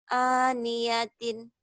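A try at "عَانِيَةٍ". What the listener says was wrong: Aniyatin dihentikan jadi aniyah. Itu yang namanya tamar butoh. Namanya tin tak marbutoh, kalau dihentikan bunyinya sama seperti ini. Ini bunyi, ini tulisan, ini bunyi kalau dihentikan. Ini dikatakan tak marbutoh jika dihentikan berubah bunyinya menjadi ha. Aniyatin jadi aniyah. Jangan dibaca aniyat, aniyah. Kayak hayalah salat, hayalah sholah. Ya, jangan hayal salat.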